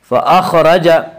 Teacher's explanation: فأخرج، را کو پر پڑھیں گے، اس کا قاعدہ یہ ہے کہ را کے اوپر زبر پیش آئے تو را کو پر پڑھیں گے، را کے نیچے زیر آئے تو را کو باریک پڑھیں گے، یہاں را کے اوپر زبر ہے اس لیے را کو پر پڑھیں گے